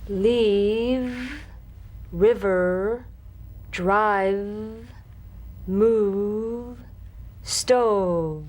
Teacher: Feel the teeth planted right in the lower lip, and you set the lower lip vibrating. That's what makes the sound.